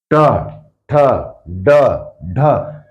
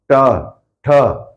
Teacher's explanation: मुर्धन्य जीभ मुड़ के ऊपर जाएगी जीभ मुड़ के ऊपर जाएगी · जीभ मुड़ के ऊपर जाएगी ट ठ यहां पर क्या होगा जीभ मुड़कर ऊपर लगेगी